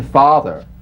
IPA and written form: ˈfɑːðər (father)